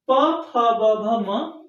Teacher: आपका सीधे से एकदम ओठ टच करता है, दोनों ओठ के बिना ये बोले नहीं जा सकते, इसलिए इनको ओष्ठ वर्ग बोलते हैं।